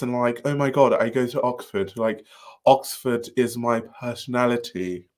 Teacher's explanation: extended vowels and all the vocal fry